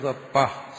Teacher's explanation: പ ഉച്ചരിച്ചു പ, ചുണ്ട് രണ്ടും കൂടി വരുന്നുണ്ട്. അതുകൊണ്ടാണ് അതിന്റെ സ്ഥാനം ഓഷ്ഠങ്ങളെന്ന് പറഞ്ഞത്.